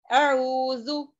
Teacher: दोनों दांतों के दरमियान थोड़ी जुबान बाहर आनी है, यानी कि जुबान की नोक जो है दांतों के किनारे, सनाया उलिया, ऊपर के 2 दांत सामने के दांतों के किनारों को टच करना है। · अब जाल में बजिंग साउंड नहीं आनी है, जू की आवाज नहीं आना है। जेड वो जू रॉन्ग।